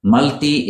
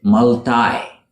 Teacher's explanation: Multi is the British way to say this word. In America, they pronounce it multi, with a long I sound.